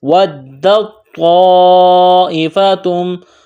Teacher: تا ساکن ہے، اس کے بعد توا ہے، توا کے اوپر تشدید ہے، تو دال کو توا کے ساتھ ملائیں گے